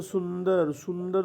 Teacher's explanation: जब हम सुंदर बोलते हैं सुंदर-सुंदर तो नाक से ही आवाज निकलती है